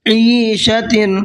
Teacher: عین کو کھینچ کر کے بھی پڑھنا ہے اور عین کو حلق سے بھی نکال کر کے پڑھنا ہے